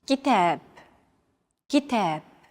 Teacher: Notice that the second syllable is stressed. It's pronounced longer and louder